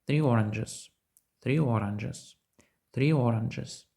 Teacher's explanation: ви додали звук й це правильно